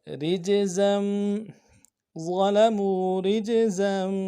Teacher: تو تنوین کو آگے میم کے ساتھ ملا کے پڑھیں گے